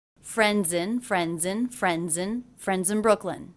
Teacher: visit friends visit friend visit friends visit friends in Brooklyn also the ending Z sound of friends linked into the beginning vowel of the next word